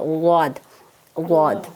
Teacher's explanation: جب وہ پھیلے گی تھوڑی سی، زبان کو تھوڑا سا پیچھے لے کے جائیں گے تو وہ پھیل جاتی ہے، اور جب پھیلتی ہے تو آٹومیٹکلی جو ہے وہ خود ہی زبان کی جو سائڈ ہے وہ داڑوں سے لگ جاتی ہے